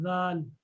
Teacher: जुबान की नोक को ऊपर वाले दांतों की नोक पर जब लगाया जाता है तो जाल अदा होता है, जाल, ठीक है, जाल।